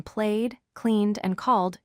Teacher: When you hear the D sound, like in played, cleaned, and called, your voice vibrates.